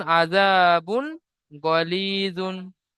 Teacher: তানবিন ও নুন সাকিনের পরে হুরুফ হালকি 6টি অক্ষরের মধ্য থেকে গইন এসেছে, তাই তানবিনের আওয়াজকে বিনা গুণায় জাহির করে তাড়াতাড়ি পড়তে হবে। গয়নের উপর যাওয়ার এসেছে, যাওয়ারটি হল হারাকাত, হারাকাতে তাড়াতাড়ি পড়তে হবে, টান দেওয়া নিষেধ।